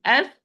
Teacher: The difference is sin is whispered letter, flow of breath